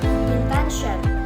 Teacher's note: Intention has 3 syllables and the stress on the second syllable.